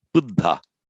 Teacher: And we know that the root bud plus the past participle ending ta, bud ta, by sandhi, by phonetic mutation, becomes, lo and behold, Buddha. So what happens is that the aspiration here shifts to the ta.